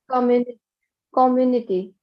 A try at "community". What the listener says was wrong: community. So the stress should be on mu community. Otherwise, it will sound different.